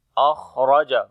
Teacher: On the Kha we make hums quality, the continuation of our breath, and also we read in heavy sound.